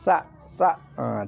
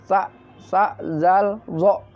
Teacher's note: Ujung lidah, tempat keluarnya adalah ujung lidah dengan ujung dua buah gigi yang atas